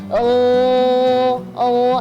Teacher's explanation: kalau kita huruf gin ini seperti kita kalau kumur-kumur